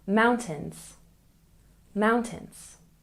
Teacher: And mountains, we stress the first syllable.